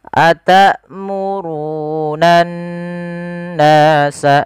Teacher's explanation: Cara membacanya adalah kita menahan suara n-nya sepanjang 2 harakat. Atamurunan nasa, jangan langsung nan nasa. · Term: gunnah